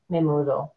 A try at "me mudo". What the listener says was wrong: It's the same word, but no stress. The stress is But se mudo, the stress is on the O.